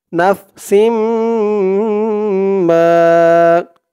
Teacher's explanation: কুল্লু নাফসিম, মিম আলিফ জবর মা, মা এক আলিফ টান, জবরের পরে খালি আলিফ। জবরের পরে খালি আলিফ থাকলেই এক আলিফ টান দিয়ে পড়তে হয়।